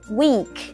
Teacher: Âm y dài mình đọc nó sẽ căng miệng ra hai bên